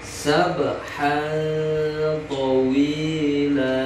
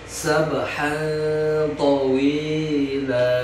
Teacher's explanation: Jadi tanwinnya disamarkan ya, disertai dengung, lamanya 2 harkat. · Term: Ikhfa